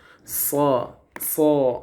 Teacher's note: huruf sod itu sifatnya apa? Hams, nafasnya berjalan keluar.